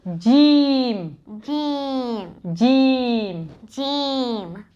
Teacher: the Jim sound comes when the middle of the tongue touches the palate